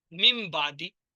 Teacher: نون کے بعد جب بھی با آئے گا نون کی آواز میم میں بدل جائے گی. من با آیا، مم بادی. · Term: اقلاب